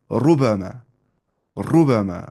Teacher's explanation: मोटी आवाज पढ़ने रुबाब रुबाबना देखिए रुबाब रुबाब र के पेश मोटी आवाज से पढ़ना है